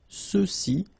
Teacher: remember final X is not pronounced, so you get the sound ce, ceux-ci, and then ceux-là.